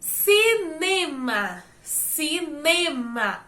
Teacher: O né, ele tem uma maior intensidade na pronúncia. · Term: paroxítona